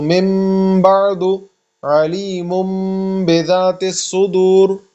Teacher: اب یہاں دیکھیں میم نون سے کنورٹ ہو گیا ہے نا، تو اس میں ہم غنہ کریں گے